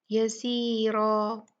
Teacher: را پہ جو ہے وہ فتحہ تین ہے تو یہ را موٹی پڑھی جائے گی